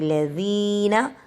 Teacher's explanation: ذال کو زبان باہر نکال کے پڑھیں گے، ٹھیک ہے، زبان کی نوک اگلے دو دانتوں کے سرے سے لگے گی۔ لذینہ، نا کو جلدی سے پڑھیں گے کیونکہ زبر زیر پیش ہے، حرکات کو کھینچنا نہیں ہے۔